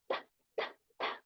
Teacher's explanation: a estar en corchetes la t regular es ta ta ta un sonido sordo dental porque la lengua toca el los dientes · un sonido sordo, dental, porque la lengua toca los dientes, ¿no? La lengua tiene, ajá, aquí tengo, la lengua tiene contacto con los dientes de arriba.